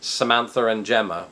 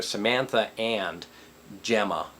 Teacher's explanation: we sort of just roll into it, and to do that we feel we have to put an R in there